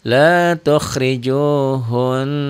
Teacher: di bacanya nyamber dan dobel dengung ke hidung dan ada madnya ada panjangnya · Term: huruf guna